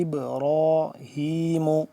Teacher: ما كان ابراہیم حمزہ با زیر اب، با ساکن ہو گیا تو اس کے ہم کیا کریں گے، قلقلہ کریں گے، اور را کھڑا زبر را کو پر کر کے پڑھیں گے